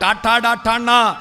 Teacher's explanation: ആ നാവിന്റെ അറ്റം മൂർധാവിൽ കുത്തിയിട്ട് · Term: മൂർധന്യവും